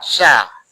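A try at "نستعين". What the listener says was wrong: S. Jangan sya ya. S. Sa. Bukan. Lidahnya dekatkan ke gigi lagi. S. Sa. Nasta'in.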